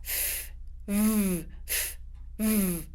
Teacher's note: It's the bottom of your lips, your bottom lip, and your teeth. F, v, f, v. Those are an unvoiced and voiced pair. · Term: voiced and unvoiced v, f